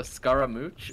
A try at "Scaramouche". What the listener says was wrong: Scaramouche. You said Scaramouche, like a mwah. Mooch.